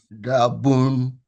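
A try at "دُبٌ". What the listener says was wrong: Very good, but the dal has a u sound. A da, but u.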